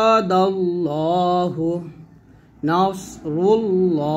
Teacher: তো আলিফের নিয়মটা আমরা যদি এখানে দেয় নাই, তবে এখানে লামের নিয়মটি দেওয়া হয়েছে যে আল্লাহু শব্দের ডানে জবর বা পেশ যুক্ত হরফ থাকলে আল্লাহ শব্দের লামকে পুর অর্থাৎ মুখ গোল না করে মোটা স্বরে পড়তে হয়